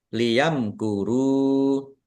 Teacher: Mim sukun bertemu dengan huruf kaf. Bacaan izhar syafawi dibaca jelas.